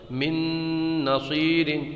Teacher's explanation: نون ساکن کے بعد میں یرملون کا نون آ رہا ہے، تو یہاں پر ادغام ہوگا، گننا کر کے پڑھیں گے